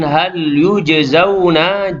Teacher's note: Kemudian hal yujzauna, jim yang sukun dalam kalimah yujzauna adalah qalqalah sughra, berdetak kecil